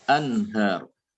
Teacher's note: Jadi nun sukun atau tanwin akan dibaca idhar, yaitu idhar adalah dibaca jelas ya, sesuai dengan makhrajnya. Jadi ujung lidah ditempelkan pada gusi ya